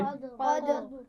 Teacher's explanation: قدر کے دال پر قلقلہ ہوگا لیکن آخر میں را ساکن ہے اور اس کو آپ موٹا پڑھیں گے